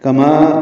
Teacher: تنوین کے بعد کاف آنے کی وجہ سے اخفا کرنا ہوگا، کما کاف باریک ہے، ما الف مدہ ہے، 2 حرکات لمبا ہے